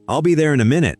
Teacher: inna is one small sound in the middle of it.